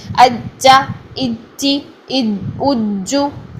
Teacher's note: غلط ہے. اس میں سانس بھی پیدا ہو رہا ہے, اس میں آپ کا جو زبان کا درمیان ہے فرنٹ تالو کی طرف آ رہا ہے, یہ ساری ادائیگی غلط ہے.